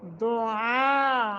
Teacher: پہ قلقلہ علو عین علو نہیں دعا نہیں ہوتا لفظ دعا عین دعا یہاں مد متصل ہے لمبا کریں گے عین کا مخرج واضح کر کے پڑھیں گے ورنہ معنی یہ نہیں رہے گا اگر دعا پڑھیں گے حمزہ